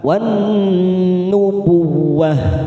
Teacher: Kita ambil wakaf di sini ada tak marbutoh maka kita baca seperti huruf H